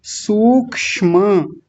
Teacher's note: म को पूरा रखेंगे सबसे पहले तो सूक्ष्म और बड़े ऊ की मात्रा है तो बड़ा ऊ ही रखेंगे